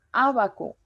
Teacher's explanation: el acento en la antepenúltima sílaba